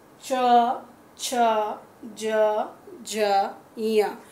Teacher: इस वर्ग का तालु है, तालु से बोला जाता है। अब देखेंगे तालु कहते किसे हैं, तालु जो आपके मुंह के नीचे वाला हिस्सा होता है उसे हम तालु कहते हैं। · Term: तालु वर्ग